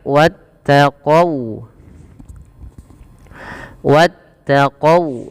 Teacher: Kemudian sempurnakan ketika kita melafalkan huruf wau. Jangan dibaca wattaqo qo dengan o tapi dia dengan u ya · jangan dibaca wattaqau dengan o, tapi dia dengan u ya, karena dia sifat waw. Wawu, maka wattaqau.